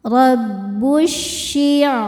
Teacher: Cara membaca alif lam ini adalah alif lamnya tidak perlu dibaca. Masukkan langsung ke syin atau diidgamkan. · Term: idgham syamsi, alif lam syamsiyah